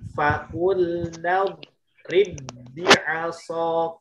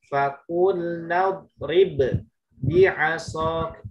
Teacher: Nah, dua huruf tersebut sama-sama nih. Maka yang satu sukun, yang satu berharokat. Maka diidghamkan langsung ke huruf yang kedua. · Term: idgham mutamatsilain